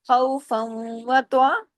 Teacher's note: فن کی تنوین ختم ہو جائے گی کیونکہ آگے واو پر تشدید ہے، تو ادغام ہو جائے گا. فا جا کے واو میں جڑے گا، ادغام ہو جائے گا.